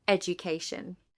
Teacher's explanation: In the word education, the stress pattern is education. The third syllable has primary stress. The first syllable has secondary stress. The second and fourth syllables are unstressed.